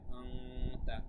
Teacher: তানউইনের পরে ইকফার হরফ আসলে এরকম অনুস্বারের মতো উচ্চারণ বলতে হয়